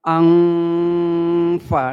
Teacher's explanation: Nah, mau idgham tapi nyatanya tidak idgham. Sehingga saat kita mendengungkan, menahan bacaan nun, itu posisi lidah kita itu sudah pada huruf sesudahnya. Artinya saat kita mengucapkan angfa, nah itu posisi lidah kita sudah pada huruf fa. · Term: ikhfa